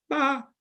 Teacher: now in high-pitched tone ma can mean mother